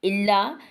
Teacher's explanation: इल्ला अलिफ से पहले ज़बर है तो अलिफ मद्दा है, थोड़ा सा लंबा करेंगे